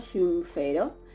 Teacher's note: la nasal de syn, en contacto con la labial de la raíz del verbo fero, se va a también a labializar, y por eso yo tengo como resultado synfero.